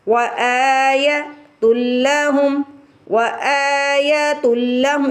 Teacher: حمزہ کے اوپر کھڑی زبر ہے، حمزہ کو کھینچ کے ادا کریں گے. وآیۃ لہم، وآیۃ لہم، اس کو تل نہیں پڑھیں گے، تل پڑھیں گے.